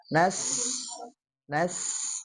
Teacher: ada suara tambahan seperti suaranya desisan ular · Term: sofirnya